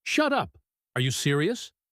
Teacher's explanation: He uses a high-pitched voice and fast speech.